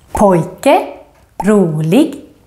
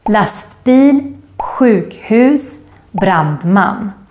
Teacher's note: the grave accent, the accent that goes up, down, up, in words with two syllables with typical Swedish ending, such as pojke, rolig, and also in compound words, two words put together, such as lastbil, sjukhus, brandman.